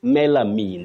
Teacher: say melamine there is no vowel Glide at the end